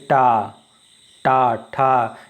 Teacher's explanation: मूर्धन्य का मतलब होता है मुंह के भीतर का छत का जो अगला भाग होता है उसमें जाके जीभ लगती है